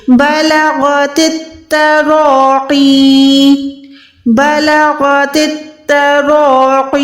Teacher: یا ساکن، یعنی یہاں پر حروف مدہ ہو گئی، یا مدہ ہے تو ہم نے اس کو لمبا کرنا ہے